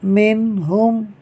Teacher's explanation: نون ساکن کے بعد ہا حروف حلقی میں سے ہے، لہٰذا اظہار ہوگا، یعنی نون ساکن میں غنہ نہیں ہوگا۔